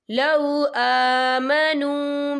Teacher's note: واو ساکن ہے، واو ساکن سے پہلے پیش ہے، تو ہم اسے 2 یا 3 حرکت کے برابر کھینچ کے پڑھیں گے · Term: واو مدہ